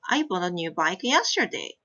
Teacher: So we put a primary stress yesterday normally.